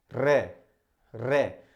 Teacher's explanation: practical के तौर पे आप बोलकर देख सकते हैं, जब भी आप रे का उच्चारण करते हो तो आपकी जिह्वा जो होती है वो कंपन करती है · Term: प्रकंपित व्यंजन